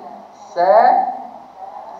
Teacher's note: Sa dengan sa sama makhraj dia. Cuma sa tu pakai lidah angkat ni. Lidah bahagian belakang ni dia terangkat. Hak belakang ni terangkat.